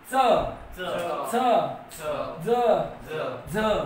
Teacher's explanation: ज्या वर्णांचा उच्चार दात आणि टाळू या दोघांच्या माध्यमातून होतो त्यांना म्हणतात वत्स. आणि या वत्सचा उच्चार करताना पुन्हा जीभेकडे लक्ष द्या. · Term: दंत तालव्य